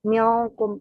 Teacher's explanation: n-nya itu samar mendekati eng tapi enggak sampai yang eng banget penyebutannya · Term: ikhfa